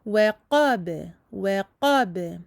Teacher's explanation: Attention à ne pas l'emphatiser et à le garder aminci car le b est toujours aminci.